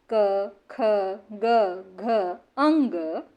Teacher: क वर्ग के सारे वर्णों में जो प्राण वायु फेफड़े से निकलती है, वह कंठ से होती हुई बाहर आती है